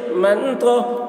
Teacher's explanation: نون ساکن کے بعد حروف اخفا میں سے تو آ رہا ہے، اس لیے نون کی آواز کو ناک میں چھپا کر پڑھیں گے، اس کو اخفا کہتے ہیں